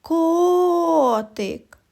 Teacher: наголос падає на звук О він і називається наголошеним і промовляють його з більшою силою і довготою